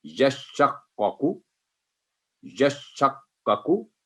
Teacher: पहले यश पे आवाज रुकेगी, फिर शक पे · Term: तशदीद